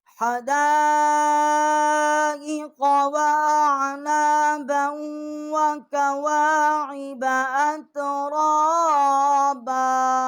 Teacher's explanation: دال الف مد زبر دا، یہ بڑی مد ہے، 4 الف جتنا اس کی آواز بلند کی ہے. اور با کو ہم نے واو کے ساتھ مشدد کیا ہے اور یہاں غنہ کیا ہے.